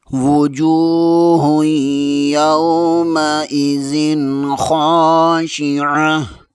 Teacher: تا کے اوپر 2 پیش ہے، وقفے کی صورت میں تا کو ہا میں تبدیل کر دیں گے۔ · خا زبر کے آگے الف مدہ ہے، اسے 1 الف کے برابر کھینچ کر پڑھیں گے۔